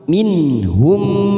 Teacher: Idhar syafawi ini juga kita baca jelas tanpa mendengung